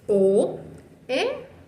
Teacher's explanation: Porque la O y la E no quedaron en una sola sílaba, sino que quedó una al ladito de la otra, pero en sílabas diferentes. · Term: hiato